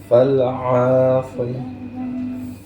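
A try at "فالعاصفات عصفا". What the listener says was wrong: Jangan mantul. Agak lama sedikit. Kalau fal'a itu mantul.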